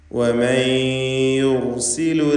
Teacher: സാക്കിനത്തായ നൂനിനെ ഇദ്ഗാം ബിഗുന്ന ചെയ്ത് യായിലേക്ക് ലയിപ്പിച്ച് മണിക്കുക. യുർസിലു എന്ന് പറയുമ്പോൾ റാഇന് തഫ്ഖീമാണ്.